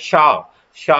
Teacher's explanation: शा जो वर्ड है वो किससे किया जा रहा है हमारी जीभ तालू से लग रही है · हमारी जीभ तालु से लग रही है जाके